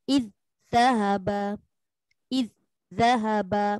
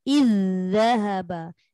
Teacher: Zal ni ada suara yang dilepaskan. Jadi bacaannya tak boleh kosong. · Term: rokhawah zal